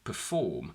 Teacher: schwa sound uh in unstressed syllables let's look at this word we have two syllables and two combinations e r f and o r m the second syllable is stressed